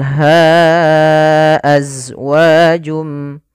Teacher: daripada Mad far'i yaitu Mad yang terjadi disebabkan karenanya adanya Hamzah pada dasarnya ha itu dua harakat karena datang setelahnya huruf hamzah maka menjadi panjangnya empat harakat atau lima harakat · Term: Mad Jaiz munfasil